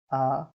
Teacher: मुख सबसे बड़ा खुलता है। जैसे आ, जब हम आ को बोलते हैं तो हमारा जो मुख है वो ज्यादा बड़ा खुलता है।